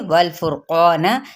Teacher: नून की ज़बर को हम लंबा नहीं करेंगे।